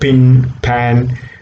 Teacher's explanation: there okay therefore it's a bilabial sound it's a proceed because there's a complete blockage of air then there is a sudden release · it does not produce vibration therefore it's a voiceless sound uh bilabial means you know both lips are involved there